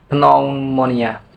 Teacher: a language may choose to delete one of the consonants, as in the loss of the initial P in pneumonia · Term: Deletion